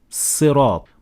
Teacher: And in the 7th verse, the word Sirat, it starts with a Sad. Some variations of the word Sirat in this position is turning the Sad into Sin.